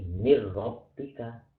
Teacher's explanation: nun ini dimasukkan ke dalam huruf ro sehingga nunnya ini ketika dibaca tidak ada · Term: idgham bila guna